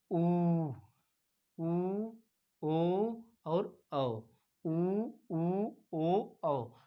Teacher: इस तरह बोलेंगे तो आपका मुख ओठ क्या होगा, आपका ओठ क्या होगा, गोल आकृति धारण कर लेगा। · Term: वृत्तमुखी स्वर